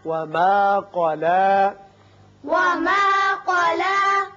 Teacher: قاف پر ہوگا لام باریک